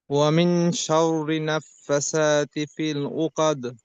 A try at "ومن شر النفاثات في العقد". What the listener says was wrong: ওয়ামিং শাররি না ভাইজান, শাররি, ওয়ামিং শাররিন গুন্না, শাররিন নাফাসাতি, শাররিন গুন্না আছে ভাইজান, শাররিন নাফাসাতি, নাফাসাতি।